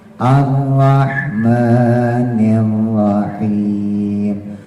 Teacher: r-nya ujung lidah taruh di langit-langit yang keras